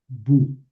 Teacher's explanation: no suena en español como diptongo, suena como una U